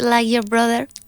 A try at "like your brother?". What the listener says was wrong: More K in the like.